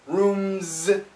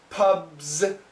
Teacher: the tongue shoots down into the z